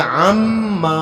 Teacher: یہاں نون اور میم کو جو ملا دیا گیا، نون ختم ہو گیا، عین کو میم کے ساتھ جو ہے جوڑ دیا گیا، عما، الف پڑھیں گے، ابھی الف کو چھوڑنا نہیں، عما۔